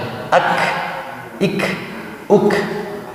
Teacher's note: Oke, tahan dulu di huruf kaf. Kaf ketika sukun ada nafas mengalir.